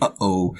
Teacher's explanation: And that basically is a break in your voice when you say something like, uh-oh. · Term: glottal stop